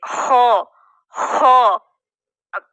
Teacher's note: خو ادنا حلق سے خو ادا ہو رہا ہے